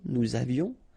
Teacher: final S not pronounced, and then little liaison, nous avions.